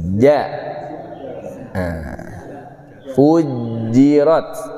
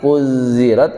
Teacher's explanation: Rasakan ada tekanan dari tengah lidah. Ja. Fujirat. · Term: huruf jim